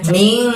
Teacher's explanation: Jadi dibacanya tidak min, tidak n jelas, tapi kita harus membaca samar dan dengung. Jadi bacaan minnya itu kita bunyikan dengan ming seperti itu ya, samar dan dengung